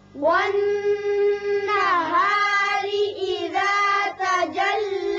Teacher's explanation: نون مشدد ہے، غنہ ہوگا.